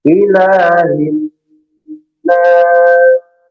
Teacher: Nah, ila, ila itu hamzahnya dijelaskan ila, ila hamzahnya pendek, la-nya yang panjang 2 harokat, ada alif kecil. Ilahin namanya bertasydid juga di gunnah panjang.